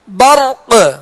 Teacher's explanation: قلقلہ بھی کریں گے کیونکہ قاف کو ہم نے ساکن کیا